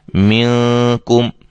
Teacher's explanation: آواز کو چھپا کر غنہ کریں گے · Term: اخفا